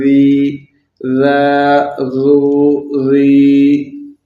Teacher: ذال کو پڑھتے وقت اپنی زبان دانتوں کے بیچ میں سے تھوڑی باہر نکالیں گے تو ذال صحیح پڑھا جائے گا